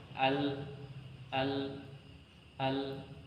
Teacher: atawasut yaitu pertengahan artinya pertengahan antara syiddah dan ruku sehingga Ee tidak berhenti seutuhnya tidak juga mengalir seutuhnya tetapi di pertengahan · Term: attawassut